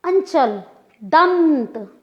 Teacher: अंचल, दंत, नाक का प्रयोग ज़्यादा हुआ, लघुता नहीं है, खींच के बोलना पड़ा। दंत पूरी तरह से नासिका से बोला गया, नासिका पर आधारित हो गया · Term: अनुस्वार